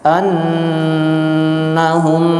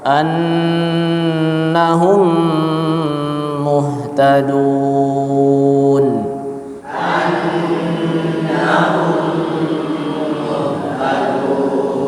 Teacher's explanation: menjadikan dua huruf menjadi satu huruf yang bertasydid disertai dengan ghunah yang dipanjangkan tiga harakat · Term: idgham mimi